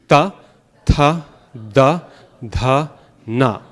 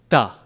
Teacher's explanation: The Sanskrit dentals are right against the teeth